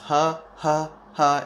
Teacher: It's just like an H sound, but throatier and with more spit, I guess you could say.